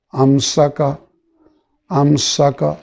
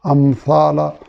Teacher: میم پہ آپ کو یاد ہوگا کہ ہم نے پڑھا تھا کہ اس میں غنہ کی صفت. امسا کا، امسا کا سین پڑھ رہے ہیں تو سیٹی کی آواز ہوگی. امثال سا پڑھ رہے ہیں تو سیٹی کی آواز نہیں ہوگی